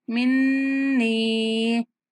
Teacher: नून पर गुन्ना करते हुए नून को खींचेंगे।